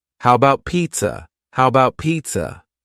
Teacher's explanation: The first A in the word about is gone. It's just missing. We say, how about pizza? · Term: reduced